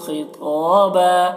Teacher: خا اور تو دونوں کو موٹا پڑھیں گے